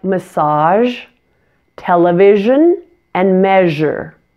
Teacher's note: I have that same mouth position for the SH sound I'm just adding my voice so I'm making sure that the vocal cords are turned on here in my throat